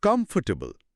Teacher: সঠিক উচ্চারণটা হল কমফোর্টেবল, মাত্র ৩টি সিলেবল। মাঝখানের অর অংশটা আসলে একটা শোয়া সাউন্ডে পরিণত হয়েছে।